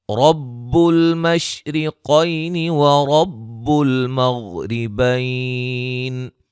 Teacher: را کو موٹا ادا کریں گے، قاف کو موٹا ادا کریں گے، یا لین ہے، را موٹی ہے یہاں، غین کو موٹا، را کو باریک، بیا لین ہے.